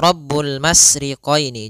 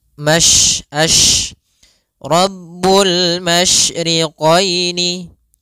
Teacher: sifat yang terkandung di dalam huruf syin yaitu menyebarnya suara. Sehingga jangan dibaca rabbul masriqini. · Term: sifat tafasyi